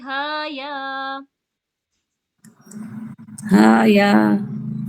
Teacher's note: हाँ इसमें खींचेंगे क्योंकि खड़ी जबर है, तो खड़ी जबर में भी 2 सेकंड्स के लिए तो खींचते हैं एटलीस्ट